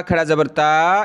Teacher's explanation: یہ کھڑا زبر کو ایک الف کی لمٹ میں کھینچا جاتا ہے۔